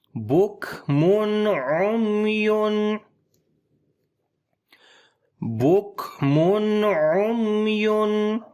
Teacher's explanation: یہاں تنوین کے بعد عین آ گیا، اظہار حلقی میں سے ہے تو یہاں پر اظہار حلقی ہوگا، نون کی آواز کو ظاہر کر کے پڑھیں گے